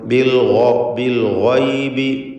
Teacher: ഗൈനിന് പൂർണ്ണമായ തഫ്ഖീം കൊടുക്കണം. ഇസ്തിഅലാന്റെ ഹർഫാണ്, തടിപ്പിച്ചുച്ചരിക്കണം.